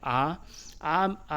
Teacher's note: अगर बोल के देख लीजिएगा दोस्तों, आ बोलने पर मुख का जो आकार है वो पूरा खुल जाता है